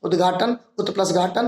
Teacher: ता और आ मिलकर के दा हो गया